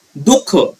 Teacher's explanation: विसर्गाचा उच्चार ह या वर्णाला थोडा झटका दिल्याप्रमाणे होतो.